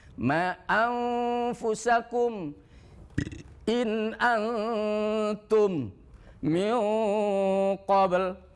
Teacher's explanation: Ikfa Hakiki ini dibacanya samar dan dengung ikhfa ikhfa artinya samar dan dengung tidak cukup hanya samar saja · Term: ikhfa Hakiki